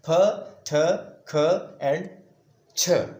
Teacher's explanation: These are known as aspirated sounds as these are produced with a puff of air.